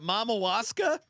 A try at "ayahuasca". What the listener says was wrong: It starts with an I.